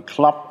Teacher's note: Das ist eigentlich ein ungerundetes O, ungerundetes offenes O.